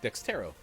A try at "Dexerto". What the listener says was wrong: Dextero? No, there's no T there. Dexerto. We're gonna go with Dexerto.